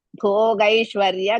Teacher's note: ಭೋ ಮಹಾಪ್ರಾಣ as well as ದೀರ್ಘ ಗೈ it is ಹೃಸ್ವ ಗ with ಐ this one ಶಾಫ್ ಶ